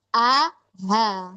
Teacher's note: Jadi tempatnya sama di bagian aksal halq tenggorokan bawah cuman beda sifatnya